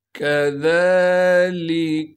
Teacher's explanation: ज़ाल को नरम करके बारीक करके पढ़ने के साथ ज़ाल पर कड़ा ज़बर होने की वजह से ज़ाल को एक अलिफ के मिक़दार खींचेंगे। लाम को बग़ैर खींचे पढ़ेंगे।